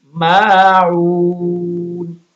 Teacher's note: واو مدہ ہے اور آخری حرف وقف کی وجہ سے ساکن ہو گیا تو مد عارضی ہوگی